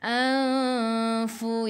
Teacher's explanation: fu gigi atas menyentuh perut bibir bawah. Dan sifat huruf fa ni dia ada angin hamas.